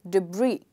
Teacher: if I stress the second part, the word becomes debris, which is the correct pronunciation of this word